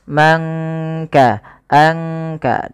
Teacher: tidak kita baca man kasaba, tapi disamarkan suara nunnya kepada huruf kaf. Mangka, angka, langsung kepada makhraj daripada huruf kaf itu sendiri. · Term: ikhfa